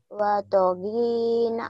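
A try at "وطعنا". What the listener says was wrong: Banyak panjang. Watogina.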